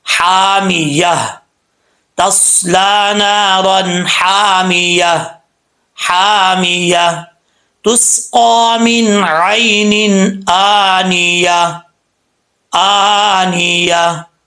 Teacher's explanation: جن کو نہیں پتا وہ جلدی میں تصلا نارا حامیہ، تسقا من عین آنیہ، بیچ میں یا، لاسٹ پہ جو یا اور ہا آتا ہے اس کو چھوڑ دیتے ہیں، جو کہ ایسا نہیں کرنا چاہیے، بالکل غلط بات ہے۔